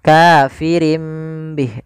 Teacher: iqlab itu mengganti suara Nun menjadi suara mim maka di sini ditandai dengan huruf mim kecil maka ini kita